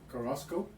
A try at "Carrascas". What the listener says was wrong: No, there's no O in it.